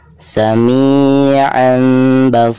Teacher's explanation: maka suara tanwin tersebut itu harus digantikan ke suara mim sukun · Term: hukum iklab